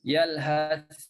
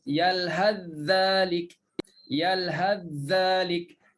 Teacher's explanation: kalau wasal langsung masuk dalam huruf dzal. Yalhadzalik, sa tak timbul langsung. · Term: idgham